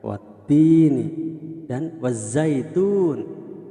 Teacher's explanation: Jadi huruf ta tadi, huruf ta tersebut berharokat kasroh bertemu dengan ya mati, maka tini dibaca panjang.